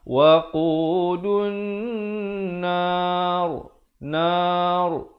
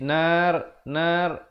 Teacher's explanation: Bila kita waqaf dia jadi tanda sukun asli, sukun mendatang, mati mendatang. Jadi dimatikan ra tersebut, dibaca dengan wajah yang tebal.